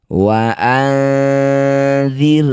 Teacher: Cara bacanya bunyi nun dengungkan 2 harokat. Ketika dengung lisan kita sudah bersiap bunyikan dzal. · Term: ikhfa awsat